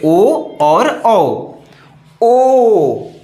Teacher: कंठ से निकल के ओठ को गोल बना दे रहा है